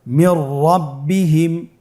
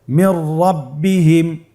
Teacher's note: নুন সাকিনের পরে যদি র হরফ আসে তাহলে নুন সাকিনকে পরবর্তী হরফের সাথে মিলিয়ে গুন্না ছাড়া পড়তে হবে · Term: ইদগামে বিলা গুন্না